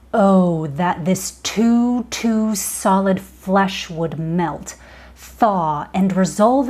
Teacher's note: Instead of that skipping rhythm of regular iambic pentameter, you get this heavy plodding.